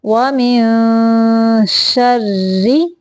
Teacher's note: را کو باریک پڑھیں گے کیونکہ را کے نیچے زیر ہے